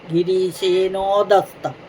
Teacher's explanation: ഗിരീശേനഹ ആ വിസർഗം ഉണ്ടായിരുന്നു അത് പോയി ഉ എന്ന സ്വരാക്ഷരം അടുത്തു വന്നകൊണ്ട് അത് ഓകാരമായി മാറി